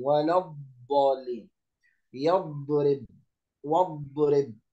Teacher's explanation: والاستطالة معناها هي امتداد الصوت من أول حافة اللسان إلى آخره عند النطق بحرف الضاد. هكذا ويكون الاستطالة ظاهرة، يعني تظهر عندما يكون حرف الضاد ساكنا أو مشددا.